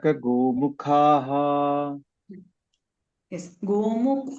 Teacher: गोमुख ख महाप्राण ख last यू are missing that